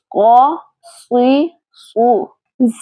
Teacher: پیچھے سے زبان اوپر کی طرف اٹھی ہوئی ہے اس حرف کے موٹا ادا کرنے کی وجہ سے